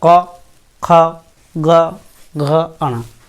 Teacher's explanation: जीभ का पिछला भाग हमारा क्या होगा, हमारे गले से स्पर्श करेगा। मतलब क्या, कंठ से हमारी आवाज़ निकलेगी, उनको बोला जाता है कंठस्थ व्यंजन।